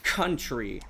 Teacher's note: The U isn't pronounced because there's an R. The C is aspirated, which aspiration is a little puff of air like like how you'd say in country, like you hear the C.